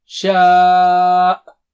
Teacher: آخری کا حمزہ کا جھٹکا واضح ہو